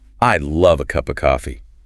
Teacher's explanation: You feel how you're just jumping between those main words. Love, cup, coffee. >> Yeah. The a and are just bridges to get to the next beat.